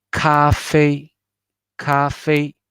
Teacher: For example, let's see, for 2 pinyin word, we have to, in our mind, we have to imagine two boxes with different sides. The first pinyin is lower, the second pinyin is higher and longer. · both are first tone, but however, the ka should be lower, fei should be higher, and the ka should be quicker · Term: light stress